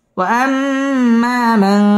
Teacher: ওয়াম্মা মান ইকফা এখানে গুন্নাহ করে পড়তে হবে